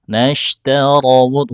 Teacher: huruf ra berbaris fathah dibaca tebal